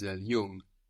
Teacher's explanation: it's like the English NG actually so you don't really hear a g here